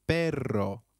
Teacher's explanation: double R in Spanish can also be referred to as rolled R. The pronunciation is almost with a vibrating sound.